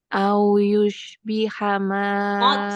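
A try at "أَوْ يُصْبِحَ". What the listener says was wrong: Sod. Jangan sod. Sama kayak mau bilang sin. Desisnya kuat. Au yus. Sisu.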